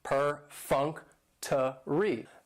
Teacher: And perfunctory has 4 syllables, and the stress is on that second syllable, that funk